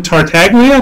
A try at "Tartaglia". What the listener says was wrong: You don't pronounce the G, so it's Tartaglia.